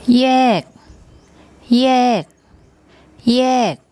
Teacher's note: Initial consonant is the yor yak y sound, and then the final consonant is the gor gai, which has, as a final consonant, it has like an unreleased k sound.